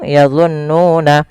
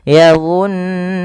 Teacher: menahan suara nunnya sepanjang 2 harokat. Maka yadhunnuna jangan langsung yadhunnuna tapi ditahan dulu nunnya yadhunnuna. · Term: bacaan gunnah